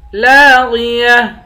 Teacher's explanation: لاغیہ، لام کے بعد الف ہے، الف حروف مدہ ہے، اس کو ایک الف کی مقدار کھینچ کر پڑھیں گے، غین موٹے حروف میں سے ہے، اس کو موٹا پڑھیں گے، آخر میں گولتا ہے، گولتا پر جب وقف کریں گے گولتا ہا بن جائے گی۔